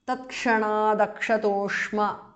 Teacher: tatkshanat is a compound word ayuta samadhikams tatkshanat because of sandhi the t in the end changes to d because of sandhi